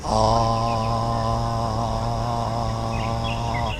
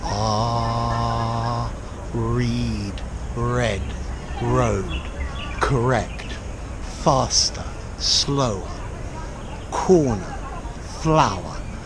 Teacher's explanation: It's just vibrating inside your throat, not at the back of your mouth, but in your throat itself. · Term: R sound